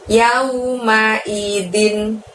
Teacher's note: Lalu din di situ kasrotain, dibaca jelas n-nya ya.